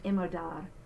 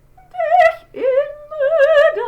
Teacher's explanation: usually we do just a slight glottal, gentle at the beginning of a word